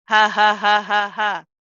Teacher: there's no sharpness to this you don't uh have any kind of jerk or um sudden stopping of the voice